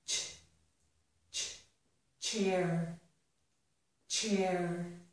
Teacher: All of these sounds are voiceless. So the t and the sh are voiceless, and that makes this sound also voiceless. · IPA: /tʃ/